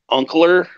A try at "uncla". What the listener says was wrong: Hey. No strong R's. No strong R's.